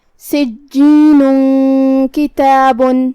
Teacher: اخفاء کا معنی ہے چھپانا، تو ہم یہ تنوین کو چھپاتے ہوئے لیکن غنہ کے ساتھ یہ حکم کو ادا کریں گے